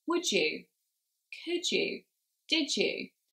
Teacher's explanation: so as you can hear guys we've now got a ja sound instead